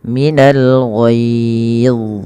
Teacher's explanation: Bagaimana caranya? Ujung lidahnya nempel dengan gigi sari atas. Kemudian setelah itu pangkal lidah kita angkat untuk menebalkan huruf dha dan lekatkan lidah kepada langit-langit atas, karena huruf dha juga ada sifat idbaqnya.